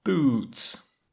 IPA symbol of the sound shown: uː